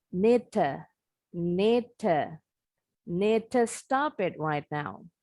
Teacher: D itu sekilas bunyinya mirip dengan T. Jadi D-nya ini hampir kedengarannya halus, seperti kedengaran bunyi T lebih dominan.